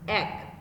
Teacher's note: যেমন এক, এই যে শব্দ দেখো, একটি যখন আমরা বলছি তখন কিন্তু এ ধ্বনিটার স্বাভাবিক উচ্চারণ আছে, কিন্তু যখন শুধু এক বলছি তখন এটাকে কিন্তু আমরা জফলা যুক্ত করে উচ্চারণ করছি, এক। এখানে মেয়ে আছে একার যুক্ত, যার স্বাভাবিক উচ্চারণ মেয়ে, কিন্তু এখানে কিন্তু বেলা বলছি না, বলছি কি বেলা। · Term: সংবৃত উচ্চারণ